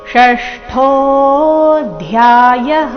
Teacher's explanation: ಷಷ್ಠೋ ಇಲ್ಲಿ ಮೂರ್ಧನ್ಯ ಶ ಇದೆ. ಠೋ ಮಹಾಪ್ರಾಣ ದೀರ್ಘ ಸ್ಪಷ್ಟವಾಗಿ ಕೇಳಿಸಬೇಕು.